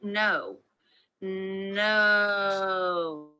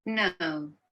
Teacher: The sound used in British English, however, is the schwa and the as in pull sound.